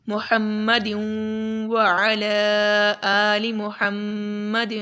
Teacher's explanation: یہاں پر ادغام کا قاعدہ اپلائی ہو رہا ہے کہ یہاں پر ہم ادغام بھی کریں گے اور ساتھ میں غنہ بھی کریں گے، کیونکہ یہاں پر واو ہے۔